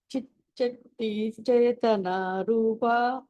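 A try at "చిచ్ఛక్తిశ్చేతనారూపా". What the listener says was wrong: ఇంకొకసారి చిచ్చక్తిశ్చేతనారూపా. శక్తి తర్వాత షా కూడా అనాలి మీరు. ఎలా అంటే చిచ్చక్తిశ్చేతనారూపా.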